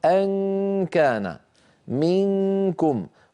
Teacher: غنة، لكنها غير ما معها تفخيم. لماذا ما معها تفخيم؟ لأنه ما معها رجوع للسان المزمار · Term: إخفاء النون عند الكاف